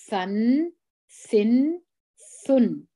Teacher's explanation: ثا د ژبې سره باسو د دواړو غاښو ترمنځ